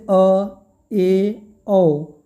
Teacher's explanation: अर्ध विवृत स्वर किसे कहते हैं? जिन स्वरों के उच्चारण में मुख आधा खुलता है, अर्ध विवृत मतलब आधा मुख खुले, जब पूरा मुख खुल जाए तो विवृत होगा।